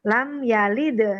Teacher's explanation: Nah, pantulannya itu lembut, kecil. Itu namanya qalqalah sughra atau qalqalah kecil.